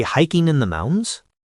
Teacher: The echo technique is just repeating the last few words of what the other person said, but with a rising intonation, like a question